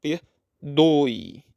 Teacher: Na palavra perdoe temos ditongo, oi, ditongo decrescente. O som da vogal é o O e o E tem o som de I, é fraco, perdoe. É a vogal O com a semivogal iode.